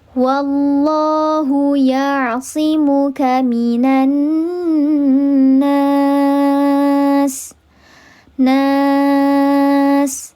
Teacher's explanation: Maka dibacanya panjang, boleh 2 harakat, boleh 4 harakat, atau 6 harakat. Yang penting konsisten. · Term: mad arid li sukun